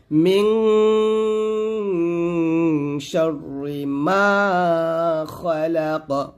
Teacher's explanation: মিং, মিং গুন্নাটা নাকের ভিতর থেকে গুন্নাটা আদায় করবেন